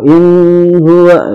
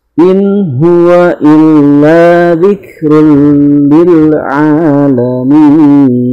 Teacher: In di situ izhar ya, izhar halqi harus jelas, tidak boleh samar, tidak boleh ditekan ya. Kalau in huwa itu salah ya.